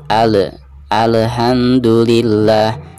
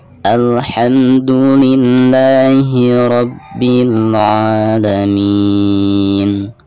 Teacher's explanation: huruf lam ini bukan merupakan salah satu daripada huruf Qalqalah ya Jadi dibacanya tidak boleh ada pantulan